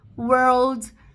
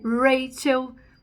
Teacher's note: o r retroflexo que é o r clássico do inglês